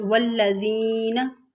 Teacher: तो हम ऐसे पढ़ेंगे वल्लज़ीना, और इसका मखरज भी मैंने आपको बताया था कि ज़ुबान के किनारे को हम ऊपर वाले दांतों के सिरे के साथ लेकर आएंगे तो दाल सा और ज़ा अदा होगा। वल्लज़ीना में या साकिन, उससे पहले ज़ेर है या मद्दा, इसको थोड़ा सा खींच के पढ़ेंगे